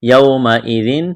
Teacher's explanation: واولین ہے اس کو کھینچنا نہیں ہے ، ذال کو نرم کرنا ہے، تنوین کے بعد حروف حلقی